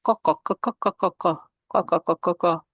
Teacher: For the letter Qaf, we are going to use the further part of our tongue, which is the further back part of the tongue. We're going to be touching the soft palate.